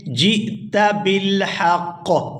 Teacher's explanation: جیم کو حمزہ ساکن کے ساتھ ملائیں گے تو جھٹکے کے ساتھ ادا کریں گے